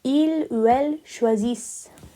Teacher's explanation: But we don't pronounce the ENT, so it becomes il ou elle choisissent.